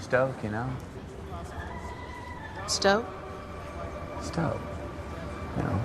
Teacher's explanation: the song-like rhythm along with a raise in intonation at the end of sentences called high-rising terminals